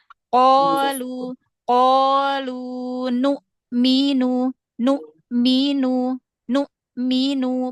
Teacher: benar-benar tertahan terkunci suaranya sama nafasnya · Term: Hamzah sukun